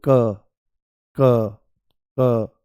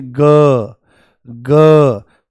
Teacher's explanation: आपको कोई वाइब्रेशन यहां पर महसूस नहीं होगी, परंतु जैसे ही आप बोलोगे ग ग, पूरा झंझना जाता है